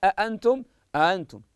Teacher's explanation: بمعنى انها تبدل بحرف من جنس حركتها معنى المثال انتم انتم ابدل الهمزه الثانيه الفا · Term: الابدال